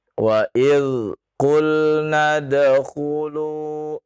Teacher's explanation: Sekali lagi huruf zal tidak qalqalah. Yang qalqalah huruf dal. Beda ya, zal dengan dal.